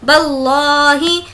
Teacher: موٹا پڑھنا ہے کیونکہ لفظ اللہ سے پہلے زبر ہے